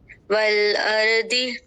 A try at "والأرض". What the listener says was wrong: ضاد کو موٹا کیجیے اور را کو بھی. والارض.